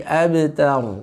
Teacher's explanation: Bunyi qalqalahnya juga lebih dihaluskan lagi, bukan ab, ya, tapi abtar, ya.